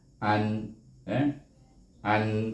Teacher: an tak ada dengung, an saja, izhar, bunyi nun tu mati. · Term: izhar halki